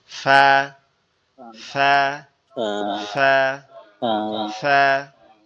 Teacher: ফা, ফাটা হচ্ছে আমাদের নিচের ঠোঁট উপরের দুই দাঁত, নিচের ঠোঁটের পেট উপরের দুই দাঁতের আগার সঙ্গে লাগবে